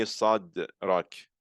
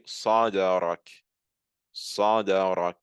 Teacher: when my tongue is touching my top palate, I'm going to release it with a type of echo. I'm not just going to lightly release it, but rather I'm going to create a type of echo. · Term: qalqala